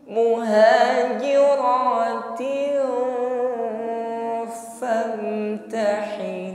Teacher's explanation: Mu'minatu muhajiratin, kasrah tanwin bertemu fa, ikhfa, ya, mengucapkan tin kita samarkan pada huruf yang ada di depannya yaitu fa, berarti kita siapkan pada makhraj huruf fa.